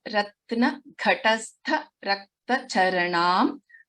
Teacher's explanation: Gha and Tha are Mahapranaksharas.